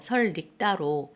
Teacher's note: 니은이 첨가되고 그다음에 앞에 있는 리을 때문에 첨가됐던 니은이 리을로 바뀌는 현상이 있다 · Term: 니은 첨가